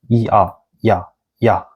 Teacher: When you speak e and a really fast, it became ya. E-a, ya, ya, ya. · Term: coupled vowels